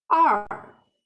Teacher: The tone, the fourth tone, which means sound goes down.